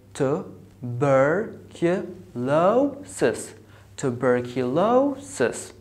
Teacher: you have the second syllable It has the secondary stress and the fourth syllable has the primary stress